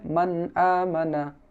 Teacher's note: এটা ইজহারের কায়দা হয় তো এটাকে স্পষ্ট করে পড়তে হয় মানা এখানে মান বলে কোন গুন্না হবে না এখানে হবে মান আমানা এরকম পড়তে হবে তারপরে হচ্ছে মিনহাদ মিনহাদ